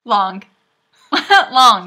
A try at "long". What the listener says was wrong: Are you saying log or long? It sounds like you're saying long. Stop saying good. There's no good at the end. It's long.